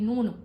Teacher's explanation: नून भी होंठ गोल हुए और आपकी जो जबान है वो ऊपर तालू पे लगी